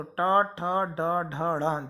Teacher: टा, ठा, डा, ढा, णा, ये कहलाते हैं मूर्धन्य वर्ण, मूर्धा को स्पर्श करते हुए वायु निकलेगी, तो टा, ठा, डा, ढा, णा, जब आप इन वर्णों को बोलेंगे तो आपकी जो जीभ है वह ऊपर की ओर टच होगी, तो ये कहलाते हैं मूर्धन्य वर्ण।